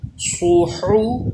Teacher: حا کی آواز حلق کے درمیان سے